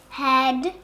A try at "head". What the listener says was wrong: Yeah, that's very good, but don't make double sounds. Just do one, okay?